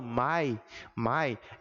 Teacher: não se separa e por conta disso é um ditongo mas vejam que é um som criado unicamente na boca não faz o uso do nariz não é um som nasalizado